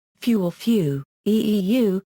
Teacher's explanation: may start with a bilabial fricative, a sound pronounced with a strong puff of air through the lips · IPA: [ɸɪu]